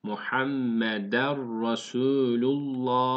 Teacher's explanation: Yani hunnesiz, hunne yapmadan idgam yapılıyor. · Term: idgam bila hunne